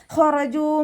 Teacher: ഖറജൂ മിൻ ദിയാരിഹിം ഹ ഇസ്തിഅലാൻ്റെ ലെറ്ററാണ്. നാവിൻ്റെ ബേക്ക് മുകളിലേക്ക് പൊക്കി കൊടുത്തിട്ട് തഫ്ഹീം ചെയ്യുക. ഹ എന്നുള്ള സൗണ്ട് കൊടുക്കുക.